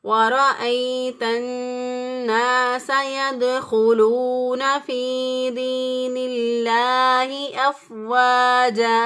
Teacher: جیم زبر الف جا، یہ بھی الف مدہ ہے، الف پہلے والے حرف پر زبر، اور چونکہ یہ زبر کی تنوین ہے تو یہاں پر ہم نے وقف کرنا ہے، ٹھہرنا ہے. تو ٹھہرنے کی صورت میں جو زبر کی تنوین ہے وہ ایک الف کے برابر اس کو لمبا کر کے پڑھیں گے